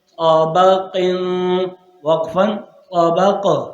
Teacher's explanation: تو طا موٹا ہے، قاف موٹا ہے، با کو باریک کرنا